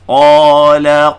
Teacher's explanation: Jadi level tafkhim number 1. Jadi qala paling tebal. Sebab apa dia? Huruf isti'la selepasnya alif.